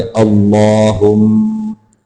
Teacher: लफ्ज़ अल्लाह को मोटा करके पढ़ेंगे, लंबा करके पढ़ेंगे